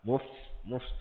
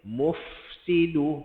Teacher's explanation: dia punya hams dia hams patutnya bunyi dia mufsidu nampak mufsidu Fa ada hams dia dulu baru masuk pada S